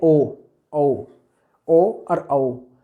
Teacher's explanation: दोनों में होठ जो है राउंड सर्कल में आ जाते हैं यानी वृत्ताकार हो जाते हैं और कंठ का प्रयोग करते हैं ओ। जब ओ बोलेंगे तो अंदर यहाँ से कंठ से आवाज़ जो है ध्वनि निकलेगी, ठीक है। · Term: कंठोष्ठ्य